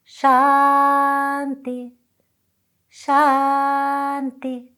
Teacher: It's the dental. It's like if you put your tongue right where your top of your inner teeth, upper teeth meet the inner skin.